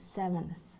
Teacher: N, dental before th, like in word seventh.